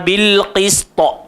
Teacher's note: Bukan qista, qista. Gemuk kan, ta dia jadi qalqalah kubra lah pasal kita nak berhenti